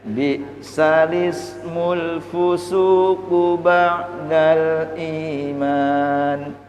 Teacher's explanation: memindah kasroh hamzah ke lam, tidak is tapi lis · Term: nakel